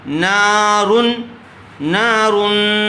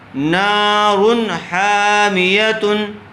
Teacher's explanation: تو حروف حلقی کے 6 حرفوں میں سے تنوین کے بعد ہا آیا ہوا ہے، اس لیے یہاں پر بھی بغیر غنّے کے نون کو ظاہر کر کے جلد پڑھیں گے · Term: اظہار